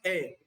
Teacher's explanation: मुख के किसी भाग में वायु रुक कर नहीं आई। इसको हमने एकदम आसानी से बोल दिया है। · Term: स्वर